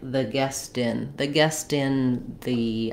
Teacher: I'll hear the T this time and it'll sound more like a flap